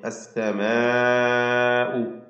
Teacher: നാലോ അഞ്ചോ ഹറക്കത്തിൻ്റെ അളവിൽ ദീർഘിപ്പിക്കൽ നിർബന്ധമാണ്, മദ് മുത്തസിൽ വാജിബ്